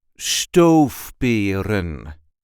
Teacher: There is a light emphasis on the first syllable.